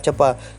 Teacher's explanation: karena faktor pengaruh bahasa daerah yang tidak mengenal fonem T pada akhir kata, yang ada adalah fonem tidak ada, sehingga kadang-kadang kata-kata tepat dilafalkan tepa. Kata-kata yang lain mengenai pelafalan seperti kata tepat antara lain adalah cepat dilafalkan cepa, semestinya cepat.